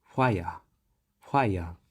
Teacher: fricative f does not actually exist in the japanese phonetics so instead of expecting f we would hear it pronounced as the voiceless bilabial fricative so both lips are positioned closely together to produce the sound